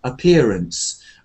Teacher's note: the word appearance is one of those words like ahead, away, appear. There's no stress on the first a.